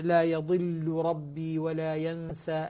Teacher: اللام مع الراء متقاربين، ولكن اللام لا تدغم في الراء لسبب التثقيل وهو التشديد